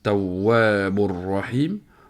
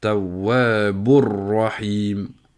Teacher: Et quand on va le prononcer, ici, Tawwabur Rahim, on prononce plus le tanwin. Le noun du tanwin ne s'entend plus, ni même la runna. On rentre directement dans le ra. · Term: idgham biré le runna